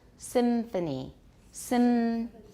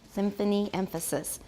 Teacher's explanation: Did you find you were making a labiodental nasal?